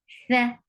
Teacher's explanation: Tha is when your tip of your tongue will touch the edge of your frontal two teeth, will pronounce tha.